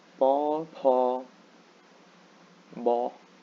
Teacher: all these letters are aspirated you have to make them sound a bit breezy